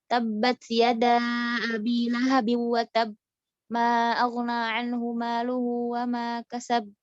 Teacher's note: tidak memantulkan huruf-huruf qalqalah ya, yang harusnya dipantul nggak dipantul.